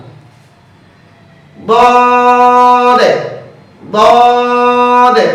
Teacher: জিহ্বার গোড়ার কিনারা উপরের দাঁতের মাড়ির গোড়ার সঙ্গে লাগিয়ে দদ হরফটি উচ্চারিত হয়। দদ হরফটি পড়ার সময় আওয়াজ শক্ত হবে, মোটা হবে, উপরের দিকে দাবিত হবে, বাতাস বন্ধ, আওয়াজ চালু।